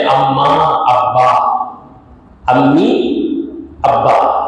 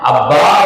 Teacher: میم اور با دونوں کا مخرج ایک ہے، ماں نکالنا تھا دونوں ہونٹ ملے گا، با نکالیں گے تو دونوں ہونٹ ملے گا، التقاء شفتین، دونوں ہونٹ ملتے ہیں تو میم کی آواز بھی نکلتی ہے اور بے کی آواز بھی نکلتی ہے